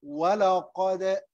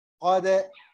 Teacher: When you have one letter of these letters with سكون سكون like here we say ولا قد ولا قد ولا قد so you see دال with سكون when we have any letter of قلقلة with سكون we make قلقلة قلقلة means to move the letter like now I said wala qad look qad the dal is moving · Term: qalqala